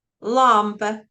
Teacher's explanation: on ne fait pas l'effort d'ouvrir la bouche après avoir prononcé la syllabe accentuée